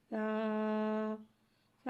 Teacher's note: और ऊपर के दांतो की जड़ से अदा होता है सा सा को एक अलिफ यानी दो हरका के बराबर खींच के पढ़ते हैं